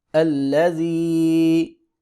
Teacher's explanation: زال کو باریک پڑھیں گے ، یا ساکن سے پہلے زیر ہے لہذا مدہ ہوگا، ایک